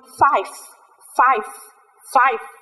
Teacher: chúng ta sẽ đọt răng của mình chạm vào môi dưới và nó sẽ phát ra cái âm giống như chữ ph Nhưng mà thực ra không ra được hẳn như thế đâu